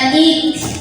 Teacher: Jadi setelah ik ya, tidak hanya sampai ik, tidak hanya tertahan suaranya, gak hanya syiddah, tapi ada angin yang keluar setelahnya. Ik ini dibunyikan secara tafkhim karena roknya barisnya di atas, maka dibacanya tebal dengan cara mengangkat pangkal lidah kita. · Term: hamas